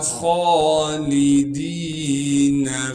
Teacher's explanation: جہنم خالدین فیہا، خا کو موٹا کر کے پڑھیں گے، خا پر کڑا زبر ہونے کی وجہ سے خا کو ایک الف کی مقدار کھینچیں گے، لام کو بغیر کھینچے پڑھنا ہے، دال کو یائی مدہ سے ملا دیں گے اور دال کو ایک الف کی مقدار کھینچیں گے، نون کو بغیر کھینچے پڑھیں گے۔